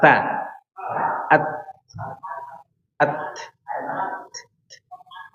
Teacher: Antum tahu huruf ta ini sekedar nafasnya yang bunyi